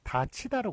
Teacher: 디귿이 넘어가면서 티읕이 되고 그 다음에 이 앞에서 구개음화가 되기 때문에 다치다로 그렇게 발음이 되죠